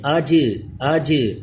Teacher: جیم حروف کلکلا ہے اس لیے آواز لوٹ کر آئے. کلکلا کریں.